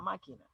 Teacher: la sílaba tónica es la sílaba antepenúltima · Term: palabras esdrújulas